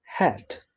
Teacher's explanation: The point of articulation is glottal. The amount of articulation is fricative.